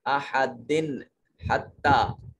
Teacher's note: دال کے نیچے تنوین ہے اور اس کے بعد ہا حروف حلقی میں سے ہے، یہاں اس تنوین کے نون کو ظاہر کر کے پڑھیں گے